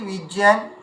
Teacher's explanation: তাহলে এখানে যে আমরা যাকে জ্ঞান বলছি এর উচ্চারণটা হবে কি? জ্যান এমন উচ্চারণ হবে।